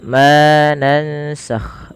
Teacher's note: Ma di sini dipanjangkan 2 harokat karena ia kita hukumi dengan bacaan namanya mad tabi'i atau bisa dikenal juga dengan mad asli.